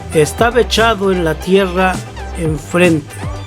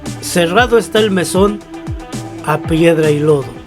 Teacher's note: cuando en el verso encontramos que una palabra termina con vocal y la siguiente palabra que le sigue inicia con vocal, y entonces esas dos sílabas se convierten en una sola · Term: sinalefa